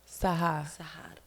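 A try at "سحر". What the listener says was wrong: Yeah, you got to roll your R's.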